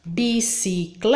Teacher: a sílaba forte da palavrinha bicicleta é o Clé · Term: sílaba tônica